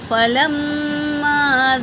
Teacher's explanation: فا اور لام حرکت ہے، میم پر تشدید ہے تو اس کا غنہ ہوگا، اور الف مدہ ہے تو ایک الف کے برابر کھینچ کر پڑھیں گے۔